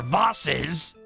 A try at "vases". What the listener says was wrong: See, look, if it's pronounced Voss, Vosses doesn't sound right. It's vases. So people who say Voss, you're wrong.